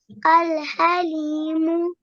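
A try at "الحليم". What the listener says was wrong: Well done.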